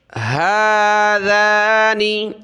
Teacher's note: ہا کھڑا زبر ہا, ذال کھڑا زبر ذا, نون زیر نی, دونوں کو ایک الف کی لمٹ میں کھینچیں گے